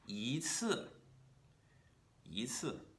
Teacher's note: And similar to 不, if the second word is a fourth tone, then we're going to rise up to meet it with a second tone. Yi will be read as a second tone. · If the following character is a fourth tone itself, then we want our bu or our i to be read as a second tone, rising up to meet where that fourth tone will start and come back down again, making an apex.